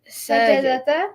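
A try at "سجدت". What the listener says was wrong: sajda. You say the word normal. Don't butcher the word, and then add something to it. Say the word as it is. Okay, it doesn't get harder when you make it feminine.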